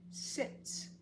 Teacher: it ended in a non vibrating so we don't vibrate the S